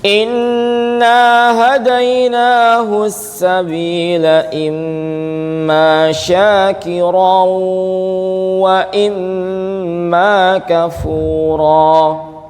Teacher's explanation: Nun tasdid dan mim tasdid ini tingkatan dengungnya itu paling panjang ya dibandingkan ikhfa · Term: gunah, nun tasydid dan mim tasydid